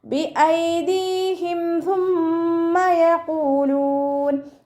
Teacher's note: മീം സാക്കിനെ നമ്മൾ വ്യക്തമാക്കി മണിക്കാതെ ഉച്ചരിക്കുക. ഇളുഹാർ ഷഫവി.